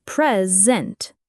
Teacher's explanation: This syllable is prominent. The second syllable, sent, is unstressed, and its vowel is reduced to a schwa